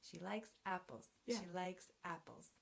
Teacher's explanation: she will be unstressed it's a pronoun likes is the main verb it will be stressed apples is a noun it will be stressed